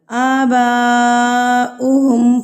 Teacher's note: مد متصل یعنی کہ یہ بڑی مد ہے۔ تو اس کو ہم نے کتنا کھینچنا ہے، 4 حرکات کے برابر۔